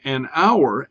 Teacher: Okay, so and we can see how this shifts back and forth with H words that begin with the letter H, because we would say an hour, okay, because we do not pronounce the H in that word. You know, we say it as hour.